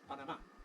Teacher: Another one where the Brits seem to vary, but the Americans are pretty sure, is the capital city in Central America, whose Spanish name is Panama. Spanish Panama has final stress. All right, we turn it into English vowels, we get Panama.